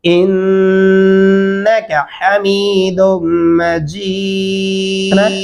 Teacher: انکا حمید مجید, کیا پڑھنا ہے انکا, غنہ کرنا ہے اس پہ, الف اور نون کی درمیانی آواز کو ناک کے اندر لے جانا اور تھوڑا کھینچنے سے غنہ ہو جائے گا